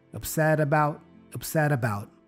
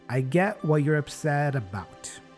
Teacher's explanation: the T becomes a flap T the D sound